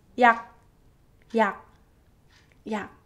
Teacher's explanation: You first try 약, 약, and then this time make it till 약, and then stop. Right before you're about to make the subtle g sound at the end, you stop. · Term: 기억 Batchim